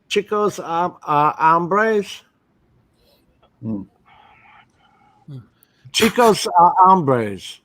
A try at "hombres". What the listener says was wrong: You can't. There's no A in the word hombres. Hombres. You cannot say hombres. Hombres. Hombres.